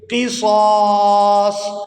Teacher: آئے بالشهر الحرام والحرمات قصاص یہاں پر وقف کریں گے تو وقف کی صورت میں پہلے صاد کو کھینچتے ہوئے دوسرے صاد ساکن کے ساتھ ملائیں گے